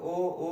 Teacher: कंठ से भी ओष्ठ से भी, तो क्या हो जाएगा, कंठोष्ठ, कंठोष्ठ, कंठ से भी और ओठ से भी कंठोष्ठ हो जाएगा, क्लियर है, ठीक ना।